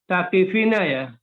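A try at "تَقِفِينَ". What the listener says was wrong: Bukan takifina tapi fi-nya panjang.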